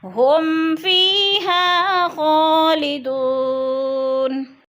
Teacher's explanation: ہم فیہا، میم ساکن کے بعد فا کے ہے تو ادھر اظہار شفی، یعنی غنہ نہیں کریں گے، لفظ کو ظاہر کر کے پڑھیں گے، اور فی پہ یا مدہ، یا ساکن سے پہلے فا کے نیچے زیر ہے تو یا مدہ، یا مدہ کو بھی ہم نے 1 الف 2 حرکات کے برابر لمبا کر کے پڑھنا ہے